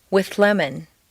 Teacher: the th moves back and the l moves forward to meet in a new middle position